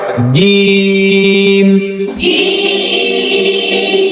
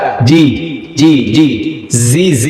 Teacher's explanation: জিম জিহ্বার মধ্যখানে উপর লাগে